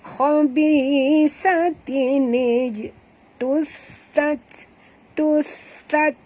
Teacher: huruf ta di sini hamas, keluarkan hamasnya, bunyi hamas